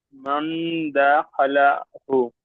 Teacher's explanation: তাই নুনকে একালি পরিমাণ গুণনা করে পড়তে হবে